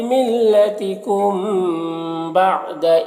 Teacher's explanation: میم ساکن کے بعد با ہے تو اخفاء شفوی ہوگا، اسے غنہ اور اخفاء کے ساتھ پڑھنا ہے